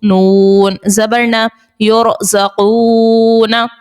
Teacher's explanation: رو ساکن سے پہلے پیش ہے، رو کو پر ادا کریں گے